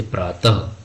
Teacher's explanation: आ रहा है ठीक है इके उच्चारण में ह की ध्वनि आती है या कंठ से बोला जाता है